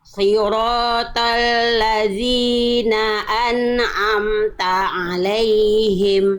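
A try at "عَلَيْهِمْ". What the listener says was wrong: Alaih. Jangan alai. Jangan le. Bunda la alaihim.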